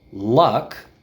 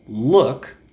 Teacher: Luck, which is in the middle of the mouth, the jaw goes down a little bit, and look, where the jaw doesn't go down at all